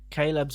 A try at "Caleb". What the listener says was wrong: Caleb. Really pronounce that E. Caleb.